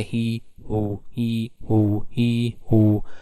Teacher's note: the lips are also rounded in whoo but not in hee